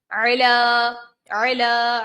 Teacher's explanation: عین ہے، حلق کے درمیان والے حصے سے ادا کریں گے